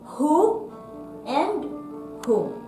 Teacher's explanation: If WH plus O, we say the H sound instead of the W sound.